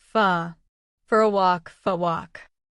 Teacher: I want to go to the park can sound like I want to go to the park. Or the for a part can sound like fa